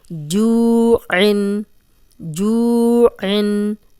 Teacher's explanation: اب جو واو مدہ ہے، جزم والی واو پیچھے جیم پہ پیش، تو اس کو 2 حرکات لمبا کریں گے۔